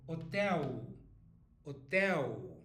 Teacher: Brazilians don't say L as an L. We say U.